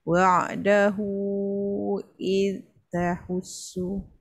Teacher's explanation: Huruf zal terlepas sikit, dia terkena tahan hujung lidah hujung gigi.